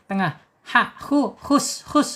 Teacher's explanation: Tenggorokan tengah ya secara makhraj, kemudian secara sifat di al-hams. Al-hams mengalir ya, mengalirnya napas ketika di ha ini sukun.